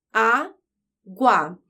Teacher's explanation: a sílaba mais forte é a penúltima então é uma paroxítona essa palavra termina com um DIT tongo · Porque as letras U e A formam um ditongo. Tem uma semivogal, U é uma semivogal, e uma vogal A. Quando eu separo as sílabas, elas ficam na mesma sílaba, então é um ditongo.